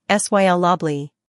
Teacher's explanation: the emphasis is on the first syllable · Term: word stress